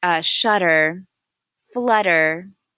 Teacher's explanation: it's really not a D it's just a very quick movement of the tongue and your voice does not stop donating it just continues the voice continues I explain to some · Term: English flap